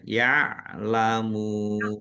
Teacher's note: Mim domah wawu sukun mat tobi'i, tetapi karena di akhir kata maka menjadi mat arif lis sukun. Dibaca panjang boleh 6, 4 atau 2 harokat.